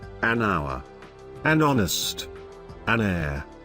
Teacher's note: It will be noticed that the words such as an hour, an honest, an air begin with a vowel sound, as the initial consonant H is not pronounced